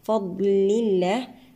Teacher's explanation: لام لفظ الجلالة هنا مرقق سبقه كسر